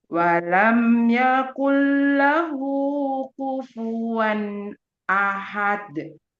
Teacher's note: Jangan lupa di akhir dal dibaca qalqalah kubro.